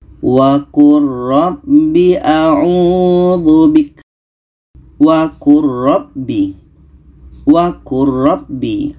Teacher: Di sini ada lam bertemu ra, maka bunyi lam ini kita masukkan ke ra.